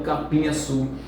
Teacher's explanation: Capim-açu, veja que terminou com a vogal nasalizada, capim, este M, então somente nasaliza o I, então capim-açu.